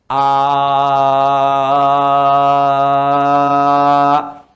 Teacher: Paling gampangnya Anda mengucapkan a, tidak ada sekat, udara mengalir saja, mengalir. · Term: hamzah